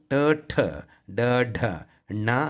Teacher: ಮೂರ್ಧ್ಯ ಅದರಲ್ಲಿ ಬಂದಾಗ ಟ, ನಾಲಿಗೆ ಸುತ್ತಕೊಂತು